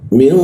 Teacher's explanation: Lalu min, nun bertemu ta, nun bertemu ta itu didengungkan, ditahan dua ketukan.